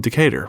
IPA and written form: dɪˈkeɪtər (Decatur)